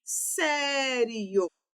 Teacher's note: Tônica no sé, que é a penúltima sílaba.